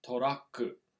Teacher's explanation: Notice that the u in the ku, the u is one of those devoiced vowels